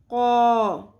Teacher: زبان کی جڑ اوپر نرم تالو سے ٹکرائے گی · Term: قوف